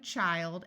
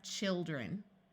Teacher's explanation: when you have one child it has a long eye sound but as soon as you make it plural the I becomes a short eye sound